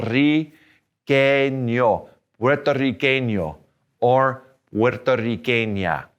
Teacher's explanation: Puerto, and then a double R is a trill.